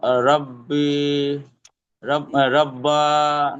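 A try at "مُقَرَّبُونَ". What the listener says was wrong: রব্বা কোথায় পাচ্ছেন? মুকর রবুন, মুকর রবুন, রবুন। এটা ওয়াকফ করলে রবুন, আর যদি আপনি ওয়াকফ না করেন, রবুনা, রবুনা।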